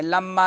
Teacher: لما میم مشدد ہے تو غنہ زمانی ہوگا،